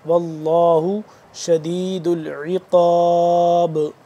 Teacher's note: با ساکن ہو رہا ہے تو یہاں پہ ہم اس پہ قلقلہ کریں گے